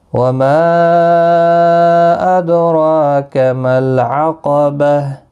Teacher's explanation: ما مد منفصل ہے، 3 الف کی مقدار کے برابر کھینچ کر پڑھیں گے. دال ساکن پر قلقلہ ہوگا، را پر بھی پڑھا جائے گا، 1 الف کے برابر کھینچ کر بھی پڑھیں گے.